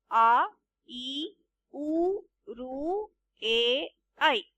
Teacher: ಈ ಅಕ್ಷರಗಳನ್ನು ಹೇಳಲು ನಿಮಗೆ ಬಹುಶಃ ಎರಡರಷ್ಟು ಕಾಲ ಬೇಕಾಗುವುದು ಅಂದರೆ ಎರಡು ಚಿಟಿಕೆ ಎಷ್ಟು ಕಾಲ ಎನ್ನಬಹುದು ಇದಕ್ಕೆ ಎರಡು ಮಾತ್ರಾ ಕಾಲ ಎಂದು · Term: ಗುರು